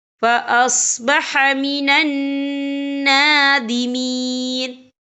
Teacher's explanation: فَأُوَارِيَ سَوْءَةَ أَخِيهِ فَأَصْبَحَ مِنَ النَّادِمِينَ، یہ دیکھیں فَأَصْبَحَ مِنَ النا، یہاں نون مشدد ہے تو یہاں پر غنہ ہوگا، اور اس پر کھڑی حرکات بھی ہے، تو ہم یہاں 3 یا 4 حرکت کے برابر کھینچ کے پڑھیں گے۔